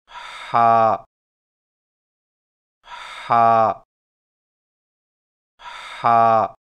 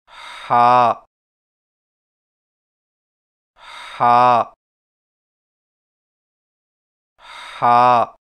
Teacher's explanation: ہا کی ادائیگی میں زبان کی جڑ کو حلق کی طرف مضبوطی سے دباتے ہوئے باریک اور رگڑ کھاتی سانس میں پڑھیں